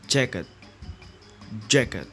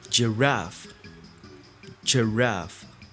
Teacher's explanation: The tongue block or constrict the airflow at the point just beyond the alveolar ridge. These words are voiced because when the vocal cords are stretched tight so that they vibrate during the pronunciation of the sound. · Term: J sound